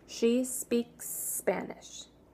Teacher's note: So instead of she speaks Spanish, you're going to only make one S between speaks Spanish